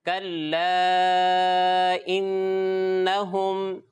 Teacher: 2 یا 2.5 الف، یعنی 4 یا 5 حرکات کی مقدار کھینچ کر پڑھتے ہیں